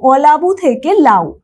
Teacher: তাহলে এই যে অটা, এই অ বর্ণটা দেখো আর নেই, এই অ ধ্বনিটা লোপ পেয়ে যাচ্ছে, তাই সেটা হয়ে যাচ্ছে আদি স্বরলোপের মধ্যে